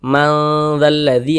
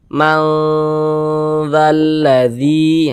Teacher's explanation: karena dia awsat, kadar samar dan kadar dengungnya pun dia seimbang. Nah, jadi di tengah-tengah juga. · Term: ikhfa hakiki awsat